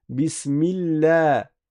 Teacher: Parce qu'il y a une kasra avant le nom d'Allah. Alors, le lam n'est pas emphatique. On va dire la.